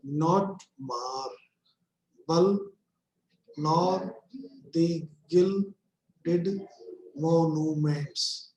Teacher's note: Each line consists of 10 syllables forming 5 feet. The first syllable of each foot is unstressed and the second is stressed. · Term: iambic pentameter